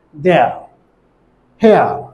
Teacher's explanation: আবার যখন ইয়া উচ্চারণ করব তখন জিহ্বাটি মিড ফ্রন্ট থেকে মিড সেন্ট্রাল যাবে আর ঠোঁটটি হবে আনরাউন্ডেড।